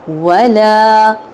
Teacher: اب واؤ پہ ہونٹ گول کیے، زبر پہ ہونٹوں کو کھولا، لا کو لمبا کیا کیونکہ الف مدہ ہو رہا ہے